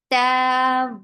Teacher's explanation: Ta, very sharp sound, no flow of sound. 2 counts long.